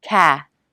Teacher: the back of the tongue comes up for the k consonant touching the soft palate cath next is the a vowel jaw drop back of tongue